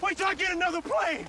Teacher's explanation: in words like get the final t frequently links with the following word that begins with a vowel another so in cases like this one the t morphs into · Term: connected speech